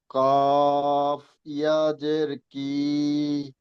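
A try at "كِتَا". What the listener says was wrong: ভাইজান, ওখানে কিয়া নেই, ইয়ার দুটি নোক্তা নিচে হয়, এখানে দুটি নোক্তা উপরে আছে।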